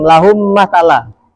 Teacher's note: Hurufnya cuman satu yang mim mati dimasukin ke mim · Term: idgam mimi